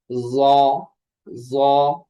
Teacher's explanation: জিহ্বার আগা সামনের উপরের দুই দাঁতের আগার সঙ্গে লাগিয়ে উচ্চারিত হয়